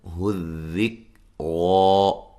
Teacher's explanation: کاف کو ہلا کے نہیں پڑھنا، ذال کو نرم پڑھنا ہے، اور را کو موٹا ادا کرنا ہے، اور ایک الف کی مقدار کے برابر لمبا کرنا ہے۔